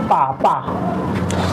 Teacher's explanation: दोनों ओठ से हम बोलते हैं पा